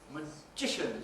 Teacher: Magician, second syllable stress.